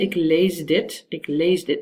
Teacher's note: Because the d is voiced, you tend to also use voicing in the s, and you actually make it into a z. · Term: assimilation